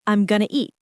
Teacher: The sounds connect. Going to becomes gonna. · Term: connected speech